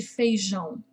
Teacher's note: um fonema muito característico produzido pela junção da letra dos grafemas A e O com o som nasalizado indicado pelo acento til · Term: fonema ão